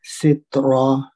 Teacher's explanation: ہاں میں پھر الف مد ہے، 2 حرکت لمبا کر کے پڑھیں گے. سترا تا ساکن ہے، یہاں پہ حمز ہوگا اور را کی 1 تنوین گر جائے گی اور مد کے ساتھ پڑھیں گے سترا.